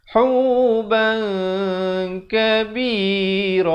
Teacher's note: Tapi bila datang kaf, jadi disembunyikan bunyi tanwinnya itu atau bunyi nunnya itu di belakang kaf dengan kadar 2 harakat